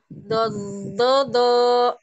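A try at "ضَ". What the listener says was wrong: Oh, masih ada ya? Masih ada dari ujung lidahnya ya, suaranya. Masih ada dari ujung. Bob, bob, gitu ya.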